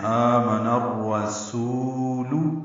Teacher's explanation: سین کو دو حرکات لمبا کرنا ہے، واو مد ہے